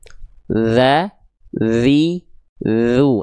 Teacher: patokannya menyentuhkan ujung lidah kita ke ujung gigi sari atas kita. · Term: huruf dzal